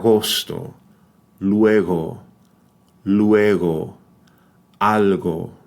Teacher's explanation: air flow over the back of the tongue produces a certain friction but it's not fully cut off